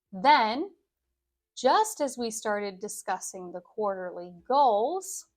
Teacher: my intonation each time is floating up a bit because I always have to take pauses after the comma,